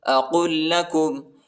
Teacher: قاف کو لام کے ساتھ ملائیں گے، یہ دوسرے لام کے ساتھ، ٹھیک ہے، اس پر شد آیا ہے اور شدت کے ساتھ پڑھنا ہے.